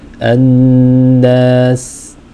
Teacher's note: when you stop on it, when you give it a sukoon, you want to make sure that breath continues, that air is continuous through your mouth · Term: letters of hums